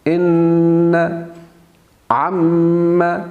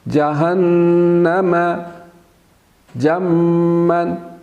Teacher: ان عم، اسی طرح سے جہنم جمن، تو نون مشدد یعنی نون کے اوپر شد ہو اور میم کے اوپر شد ہو تو وہاں پہ غنہ ہوگا، آواز ناک میں جائے گی اور تھوڑی دیر اس کو روک کے رکھیں گے